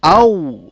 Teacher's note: আর ওয়াও, এ হরফ উচ্চারণে দুই ঠোঁট সরাসরি মিলিত হয় না, বরং উভয় ঠোঁট ডান ও বাম পাশ থেকে গোল হয়ে অর্ধ ফোঁটা ফুলের মতো মধ্যস্থলে ছিদ্র রেখে উচ্চারিত হয়, যেমন আউ। অর্থাৎ উচ্চারণ করার পর তোমার ঠোঁট দুই দিক থেকেই মিলবে, কিন্তু মাঝখানে একটু ফাঁক থাকবে।